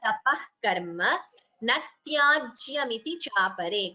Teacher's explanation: Karma is a short letter. Ma is a short letter ending with the hrasva swara a. So please do not prolong it as karma. Be careful because it is at the end of a pada.